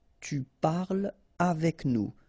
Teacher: So no liaison here between parle and avec